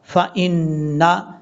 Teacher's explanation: نون کے اوپر شد غنہ کریں گے ایک الف کی مقدار